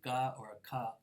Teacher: the back of my tongue is reaching all the way toward the soft palate back here and if I pronounce like gah or a cup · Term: velar sounds